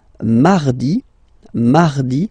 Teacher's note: So you can hear that you don't pronounce it that strongly, this R.